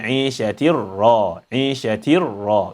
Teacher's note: You merge the silent Noon of the Tanween in the Ra, and that's why there is emphasis here. So when you merge, then the Noon disappears, and then the Ra becomes emphasized